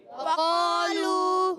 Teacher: واؤ ادا ہوتا ہے دونوں ہونٹوں کی گولائی سے، اور واؤ پر زبر ہے، کھینچنا نہیں ہے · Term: واؤ کی ادائیگی